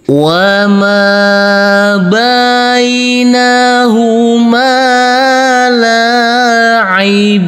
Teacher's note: kita kasih irama nada datar dengan panjang 2 harokat.